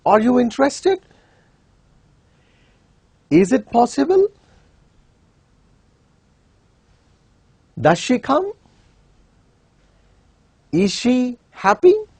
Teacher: In all these cases, the tune rises in the form of a question. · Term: rising tune